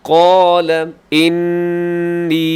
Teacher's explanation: آگے قال، قوف زبر الف، اسے آپ نے موٹا رکھنا ہے، الف بھی موٹی اور قوف بھی موٹا پڑا جائے گا۔ قال انی، یہاں نون مشدد ہے اور یا مدہ بھی ہے، لمبا کیجیے گا اور غنے کے ساتھ